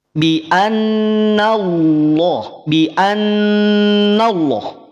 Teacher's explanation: Lafaz Allah ketika didahului oleh fathah, maka lafaz Allah dibaca tebal. Jangan sampai nun yang ada sebelum lafaz Allah ini terbawa tebal.